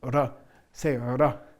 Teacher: it's a trilling of the tongue against the palate